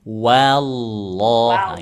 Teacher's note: Jadi wahnya itu tipis, Allahnya tebal. Wahnya tipis.